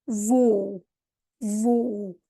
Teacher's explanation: you're going to have the O sound, but then a U at the end, because O's at the end of words are going to sound like a U